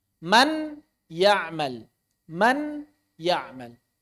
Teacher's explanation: Maka saat membaca man ya'mal, kita tidak menghilangkan suara nun 100%. · Jadi ketika membaca man ya'mal, kita tidak menghilangkan bunyi nun 100%. Suara apa yang masih tersisa? Bunyi sengau, bunyi ghunnah. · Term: idgham naqis